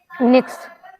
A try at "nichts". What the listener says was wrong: Nichts with an S. Nothing. That S is compulsory there. Nichts.